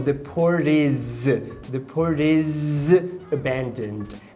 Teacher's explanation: É bem comum o is, ele ter esse vozeamento para fazer o som de z.